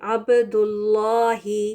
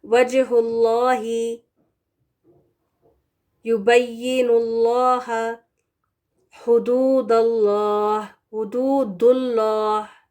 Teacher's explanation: لفظ الجلالہ سے پہلے پیش ہے تو یہ لام ہم پر پڑھیں گے